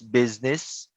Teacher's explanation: So the first S would be an Z sound, but the two S's at the end will be an S sound.